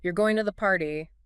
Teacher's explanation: with a rising intonation, it sounds like a question